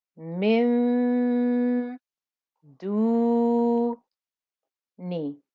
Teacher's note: my tongue is actually going towards pronouncing the letter Del that's coming after it so my tongue is going towards that letter down so I'll